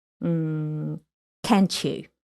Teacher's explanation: when it's T plus Y, it gives us the sound ch